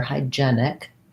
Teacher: this first vowel is the diphthong i like in high